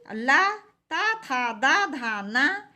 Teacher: इन सब का उच्चारण स्थान दंत होता है